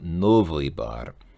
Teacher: in the word novy, the ending is not stressed. The stress is on the first syllable